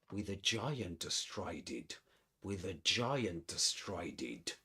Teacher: So he connects these two words, with a.